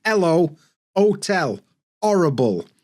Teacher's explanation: I'm from Yorkshire, my natural accent, we kind of drop the H at the beginning of words, like hello, hotel, horrible.